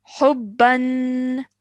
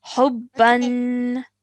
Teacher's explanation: Remember that elongated nasal sound at the end of the tanween is really important to remember